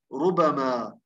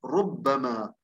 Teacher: الإمام نافع والإمام عاصم يقرأوا بالتخفيف، طب باقي القراء يقرأوا بالتشديد بالتثقيل ربما.